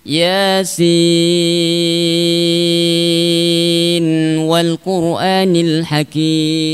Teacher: Jadi Yasin dalam keadaan waqaf Yasin wal Qur'anil Hakim tidak ada masalah. Yasin ketika wasol maka harus dibaca dengan izhar. Di dalam Thariq Syatibiyah ya harus dibaca izhar.